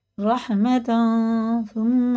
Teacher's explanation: اخفا اور غنہ دونوں کرنا، اس نون کو ناک میں چھپا کر ایک الف کے برابر پڑھنا